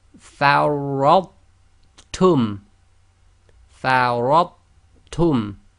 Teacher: So the ra has to join to the tha, so the tha is not actually ignored. · Note, in this case there is no shadda on the ta. We do not do the echo on the tha, i.e. we seamlessly join the sound of the tha to the ta.